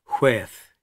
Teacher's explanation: HU before a vowel is like WH, as it used to be pronounced in English in past generations, with the H before the W